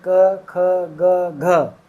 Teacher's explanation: ये सारे कहां से बोले जाते हैं बोले जाते हैं गले से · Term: क वर्ग